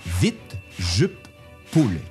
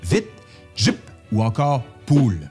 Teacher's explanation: Dans un deuxième temps, le relâchement des voyelles I, U, OU